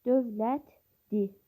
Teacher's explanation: L cingiltidir. Və li şəkilçi di kimi tələffüz olunur